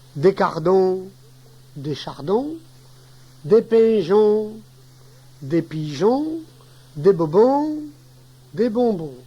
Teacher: Le on, long, marque le pluriel du on bref au singulier.